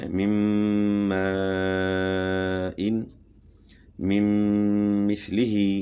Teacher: نون ساکن کے بعد میم آ گیا تو نون کا میم میں ادغام مع الغنہ، دونوں مثالوں میں نون ساکن کے بعد میم ہے، مم ماء، مم مثلہ۔